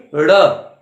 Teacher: ये ड के नीचे एक बिंदी लगा देने से ड़ बन जाता है। ड़ जुबान को थोड़ा ऊपर मोड़कर आप पलटेंगे